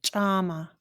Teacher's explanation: this is a ejective CH so you're going to hear like a puff of air after ch